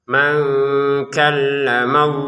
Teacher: kalau nun sukun bertemu kaf dibaca dengan samar.